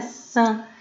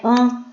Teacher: Parece que é an, porque é um som nasal, é um som que sai pelo nariz